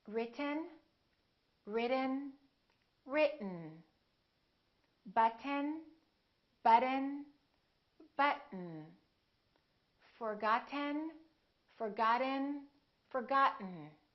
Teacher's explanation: when we have a tea followed by an N the tea is held so we hold our tongue right here behind our upper teeth and we don't release it we smoothly just go directly to the end sound without moving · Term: American accent